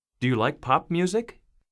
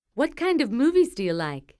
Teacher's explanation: yes no questions usually have Rising intonation wh questions usually have falling intonation